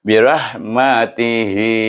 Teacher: kita menggunakan hukum mad silah qasirah, baca dengan dua harakah. Macam mad asli juga.